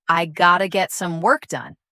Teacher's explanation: Feel how have to naturally reduces to gota making it faster and smoother.